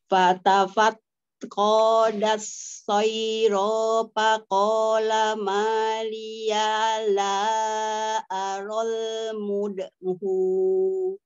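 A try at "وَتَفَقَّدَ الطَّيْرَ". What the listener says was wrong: Itu pendek Umi? Tafak kodnya tadi juga terbaca panjang Umi, harusnya pendek. Tafak kodat soiro.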